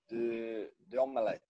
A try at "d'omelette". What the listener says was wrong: Oui, il y a la liaison.